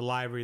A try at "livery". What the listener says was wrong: Livery. It's not lively. It's livery. Livery. You said lively.